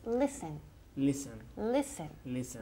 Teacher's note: Con el verbo to listen, la T es muda.